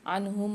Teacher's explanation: عنہم العذاب، یہاں نون ساکن کے بعد اظہار ہلکی والا قاعدہ ہو رہا ہے، غنہ نہیں کریں گے، اظہار کر کے پڑھیں گے